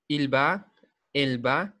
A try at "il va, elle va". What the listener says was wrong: Sin la S, il va, elle va.